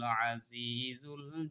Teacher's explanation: আইন এটা গলার মধ্যে থেকে বলতে হবে, আইন জবর আ, ২ নম্বর মাখরাজ ফলকের মাঝখান থেকে বা মধ্য থেকে উচ্চারণ করতে হয়।